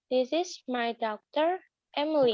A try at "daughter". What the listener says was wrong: Bukan Dauk ya. Daughter. Ya, do kayak O ya. Daughter. This is my daughter.